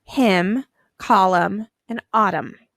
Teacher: at the end of each one of those words you hear hmm you don't hear the N so you're going to underline em n in all three of